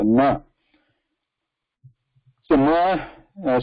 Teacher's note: the tip of the tongue has to touch the root of the upper teeth and the a has to come out of the nose so